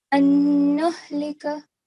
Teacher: So you kept the noon sound in for 2 seconds, which is very well done.